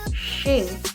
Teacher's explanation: Ciri-ciri pelafalannya adalah yang pertama, bertemunya ujung lidah dengan langit-langit lunak lalu meninggalkan aliran udara yang sempit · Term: huruf shin